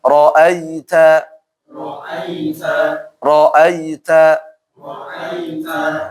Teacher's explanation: jangan terlalu ke e ya teman-teman ya karena di dalam bahasa Arab itu tidak ada e